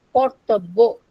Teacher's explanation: When we pronounce Kartabbo, then our main accent is shifted on second syllable, Kartabbo. When it is Katabbo, then we find that the main accent is shifted from second syllable to the third syllable or final syllable, making the word Katabbo.